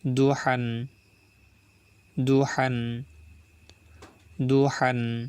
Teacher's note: হা চাপ দিয়ে গলার ভিতরে নিয়ে বলবো